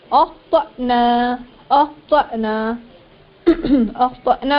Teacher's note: अख्तअना में तो उसके बाद हमजा साकिना, इसको झटका देकर पढ़ेंगे।